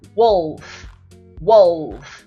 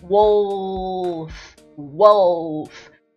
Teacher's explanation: Mais um aspecto, e a posição da sua língua quando você emite alguns sons, como por exemplo, wolf, wolf. Quando a gente fala o L, a língua encosta lá no dente de cima